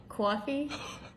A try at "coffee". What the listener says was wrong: 10 out of 10.